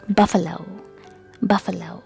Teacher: Stress is given on the first syllable, and A is not pronounced as A, it's A, and O is not pronounced as O, it's O.